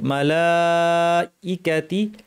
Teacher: একই শব্দে মাদ মুতাসিল দুই আলিফ এবং হামজা টাকে শক্ত করতে হবে মালাইকাতি ফাকলা এই ফা টা